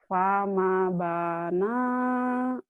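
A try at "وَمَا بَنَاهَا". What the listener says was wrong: Fama. Wama. Bukan pama. Wama bana.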